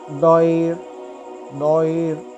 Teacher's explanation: next بھی same قاعدہ ہے، را ساکن سے پہلے یا ساکن آیا، مگر یہاں را ساکن ہونے کی وجہ سے ہم اس را کو باریک پڑھیں گے